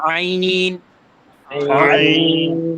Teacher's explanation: আইনটা গলার ভিতর থেকে হবে